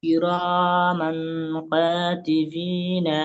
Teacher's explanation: তানবিনের পরে হরফের ইখফার 15টি হরফের মধ্যে কাফ এসেছে, তাকে এক আলিফ পরিমাণ গুণনা করে পড়তে হয়।